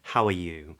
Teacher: it starts with a voiceless H where the vocal folds come together slightly and we get a voiceless sound it's very very short though it's not just short and then